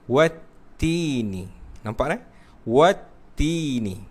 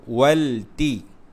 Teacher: Walaupun ada alif lam, tapi kita tak sebut alif lam dekat situ. Kita terus memasukkan huruf selepas alif lam, iaitu huruf ta.